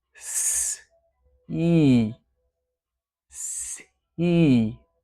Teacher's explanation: an S, the unvoiced fricative followed by the E vowel. And remember to have a nice little gap between your teeth for the vowel E.